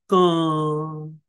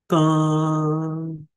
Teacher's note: Then this last symbol, which is the vowel is short, but the anuswara is long. So, ka.